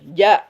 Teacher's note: jim itu mahrojnya di tengah lidah. Ya, di tengah lidah dia bertemu dengan langit